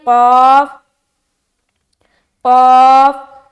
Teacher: क़ाफ मुँह भर कर बोलेंगे, हरूफ मुस्तालिया में से है